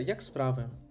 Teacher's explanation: Нейтральна інтонація як справи. Ми залишилися на одному рівні.